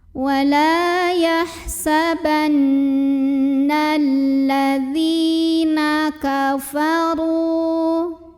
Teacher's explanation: Maka cara membacanya zal yang berbaris kasrah kita panjangkan sepanjang 2 harokat saja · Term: mad tabi'i